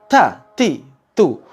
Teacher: walaupun tak ini kuat tapi ada udara yang berhembus ketika Kita mengucapkannya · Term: huruf ta